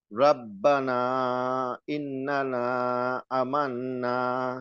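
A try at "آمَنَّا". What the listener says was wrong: আতে টান হবে, আমান্না।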